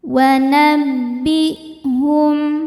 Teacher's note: Wanabbihum, hum ada izhar syafawi karena mim sukun tidak menghadapi mim atau ba, di sini menghadapi hamzah, maka mim sukun dibaca jelas